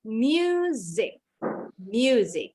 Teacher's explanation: Huruf MU-nya bunyinya mu. Huruf S-nya bunyinya Z.